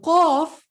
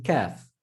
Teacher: you're going to use the portion of your tongue further to the back than the calf